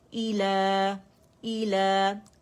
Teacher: تو مد اصلی بن رہے، 2 کاؤنٹ کے لیے آواز اوپر جائے گی